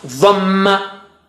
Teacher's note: Dha is thick, Ma is low.